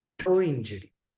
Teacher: If we say this fast, it seems like the last sound before the next word starts is wa. toe injury and not ya. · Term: semi-vowel